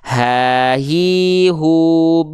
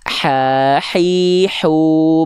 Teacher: jadi kalau ha kecil dia karakteristik nafasnya berbisik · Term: H kecil